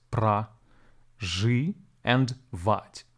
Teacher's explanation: syllables Pro which is actually pronounced as pra ji and vat the stress falls on the last syllable